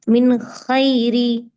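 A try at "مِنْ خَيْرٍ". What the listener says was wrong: ஹைரி இல்ல, இப்ப நீங்க பாத்துட்டு ஐன் ஐன். மின் ஹைரி.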